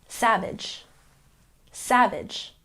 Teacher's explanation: we have a stress on the first syllable